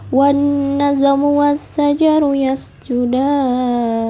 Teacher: Hukum tajwid yang terdapat pada ayat ini adalah yang pertama alif lam samsiyah pada wanna sehingga huruf lam dibaca melebur. Yang kedua, sifat qalqalah pada huruf ja dalam kata wan nazmu sehingga huruf ja dibaca memantul. · alif lam samsiyah pada wasya sehingga huruf lam dibaca melebur